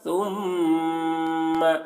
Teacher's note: ثم میم مشدد غنہ کے ساتھ میں